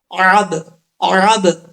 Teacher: آئین کو آئین کے مخرج سے نکالنا ہے، حمزے کی آواز نہیں آنی چاہیے